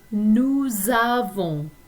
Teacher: there are a few parts of this conjugation that have a liaison, and that's where you see that z sound